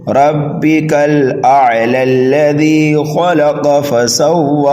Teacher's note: اس لام متحرک کو لام مشدد میں ملائیں گے